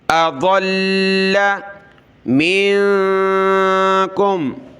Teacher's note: ضاد کو لام کے ساتھ ملایا، لام کو سخت کیا تشدید کی وجہ سے